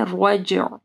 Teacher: ذات الرجع، جیم کے اوپر قلقلہ کرنا ہے، اور رجع، عین جب ساکن ہوگا تو عین کو واضح پڑھنا ہے، رجع۔ والسماء ذات الرجع، ٹھیک ہے۔